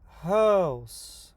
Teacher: the stress falls on the first ha sound in house. It's longer, louder, and higher pitched.